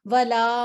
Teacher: आगे हम आते हैं वला, ये ला को 2 सेकंड लंबा पड़ा है। जी, ला को 2 सेकंड लंबा पढ़ना है। अलिफ है, अलिफ मद्दा है और उससे पहले फतहा की हरकत है, तो फतहा की हरकत जो है ये हमें फिर 2 सेकंड लंबा करके पढ़नी पड़ेगी।